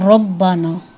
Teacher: را میں زبان مکمل مخرج پہ لگتی نہیں ہے، تو اس وجہ سے کم میلان ہوتا ہے اس میں، کیونکہ وہ اپنے مخرج کے ساتھ نہیں لگتی تو کم میلان ہوتا ہے۔ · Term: صفت انعراف